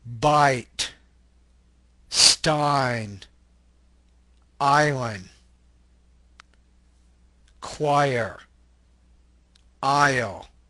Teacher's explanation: The ah sound glides into the E. I. Let's take a look at the next one. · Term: diphthongs